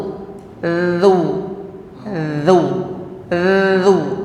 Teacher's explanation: zal itu bunyinya getar saja, suaranya bergetar. Dzu, dzu, gitu ya.